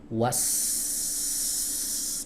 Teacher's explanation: Yang dikuatkan anginnya. Was, dorong kuat, ya, menyembur kuat, ya, ini disebut dengan hams